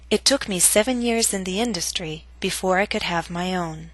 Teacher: But note that your voice must reach a lower note on own compared to industry. Own must reach a lower pitch to signal the end of the statement. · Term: falling intonation